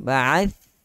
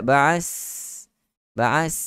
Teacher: Mestilah ujung lidah dikeluarkan. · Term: huruf tha